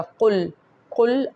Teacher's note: قل کو بالکل حلق سے قاف نکلے گا